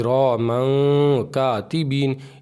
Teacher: आगे है तो ये तनवीन के बाद काफ़ है, तो इस काफ़ को भी मतलब काफ़ आ रहा है इसमें से हुरूफ़ इख़फ़ा के 15 हर्फ में से, इसलिए यहाँ पे इख़फ़ा होगा और इसकी आवाज़ को नाक में एक अलिफ के बराबर छुपा करके पढ़ेंगे